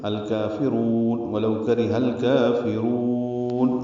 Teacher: ہا کو لام سے ملائیں گے، اظہار قمری ہوگا، کاف باریک پڑھیں گے، را پر پڑھیں گے، الکافرون، ولو کرہ الکافرون، را کو لمبا کریں گے۔